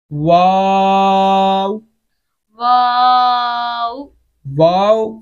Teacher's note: इसको अदा करते वक्त शुरू में भी होंठ गोल होने चाहिए और एंड पे भी गोल होने चाहिए। हाँ, इसके दरमियान का जो वाक निकालना है ना अलिफ मद्दा, उसके ऊपर होंठ नहीं गोल करने, उससे पहले होंठ गोल हो, फिर होंठ से सही हो नॉर्मल हालत में, फिर जब वाव खत्म हो रहा है तो तब भी होंठ गोल हो।